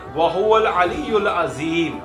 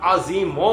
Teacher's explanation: مد عارض میں حروف مدہ کے بعد عارضی سکون ہوتا ہے، یعنی وقف کی وجہ سے کوئی حرف ساکن ہو جاتا ہے، جیسے وَهُوَ الْعَلِيُّ الْعَظِيمُ۔ یہاں پر وقف کی وجہ سے عارضی سکون سے عظیموں کی بجائے عظیم پڑھا جائے گا